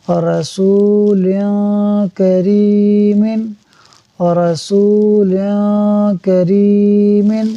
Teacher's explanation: ہمارے پاس جو پانچواں لفظ ہے وہ ہے رسول کریم، رسول کریم، ہجے کرتے ہیں را زبر را، سین واو پیش سو، رسو، لام دو زیر لن، رسول، کاف زبر کا، را یا زیر ری، کری، میم دو زیر من، ملانے سے پہلے قاعدہ دیکھتے ہیں، لام کے نیچے دو زیر کی تنوین کے بعد کاف حروف اخفا میں سے اخفا ہوگا، یعنی ہم غنہ کریں گے